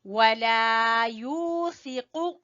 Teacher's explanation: یو کو کھینچیں گے واو مدہ کی وجہ سے